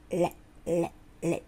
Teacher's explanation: 舌を上にね、ベロを上の前歯の裏側にペタッとくっつけます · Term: L